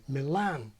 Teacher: much fun as I thought was Milan thrust from Milan but in more Modern English we put the stress where it is in Italian on the second syllable